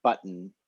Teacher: it represents a syllabic consonant. So like the N in the English word button, where it's actually just I'm just pronouncing it sound all by itself.